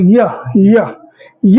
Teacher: य बोलो य य य बोलते हो तो देखोगे तो ये जो य बोल रहे हो ये तालुक में कम टच हो रहे हैं मतलब हल्का सा गैप रहता है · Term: अंतस्थ